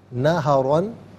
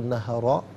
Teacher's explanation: را پر دو زبر کی تنوین ہے، تو اسے پر کر کے پڑھا جائے گا، وقف کی صورت میں بھی، اور وقف نہ کیا جائے تب بھی اسے پر کر کے پڑھیں گے۔